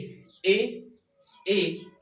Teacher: ए और ई का दोनों का मिलावट होता है